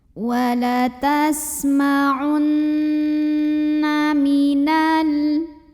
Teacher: Cara membacanya, nun ini didengungkan. Bunyi n-nya tahan sampai ada getaran halus ke hidung. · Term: gunnah musyaddadah